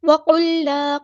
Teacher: قاف ہمارا heavy letter ہے، پورا ادا کریں گے ، لیکن لام ساکن کو یہاں ہلانا نہیں ہے، وقلنا نہیں